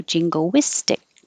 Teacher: When you say jingo, your lips will get small and then come back and make a W.